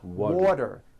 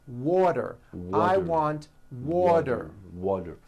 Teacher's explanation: correctly here are three examples water water is pronounced as water t turns into a d and the whole word is voiced water I want water water better become better better she's feeling